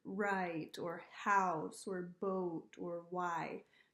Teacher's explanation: For example, in the word right, or house, or boat, or why. You'll notice that you kind of glide your mouth in the process of making those vowel sounds. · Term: diphthongs